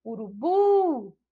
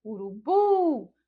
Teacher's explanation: a gente já percebe então que a sílaba tônica é a sílaba bu e que é justamente a última sílaba